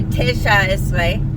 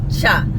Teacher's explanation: So notice we don't say tesha esre, it's cha. So that first vowel got shortened, reduced to a schwa.